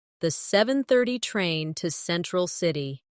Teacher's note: Do you notice how to almost disappears? It blends into the next word sounding like to central city.